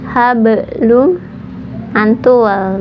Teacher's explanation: Kemudian hablum, hablum antul, berarti qalqalah. Kalau di tengah itu qalqalah sugro, pantulannya kecil, huruf qalqalahnya yaitu ba. Hablum, lum, lam masuk kepada mim ya, karena ada tasydid.